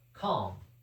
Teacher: We don't pronounce the L in calm.